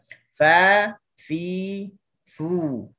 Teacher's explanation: Fa gigi kacip atas bersentuh perut bibir bawah yang basah.